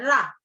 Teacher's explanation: रा का उच्चारण करते समय जीभ की नोक मसूड़ों के नजदीक आकर कांपती है। रा हमारे जो मसूड़े हैं उसके पास तक जाती है लेकिन लगती नहीं है, कांपना यानी ऐसे होती है, रा, उसको प्रकंपी माने हिलती है, जीभ वहां तक पहुंचती नहीं है, कांपती है, हिलती है, उसको प्रकंपी व्यंजन कहते हैं।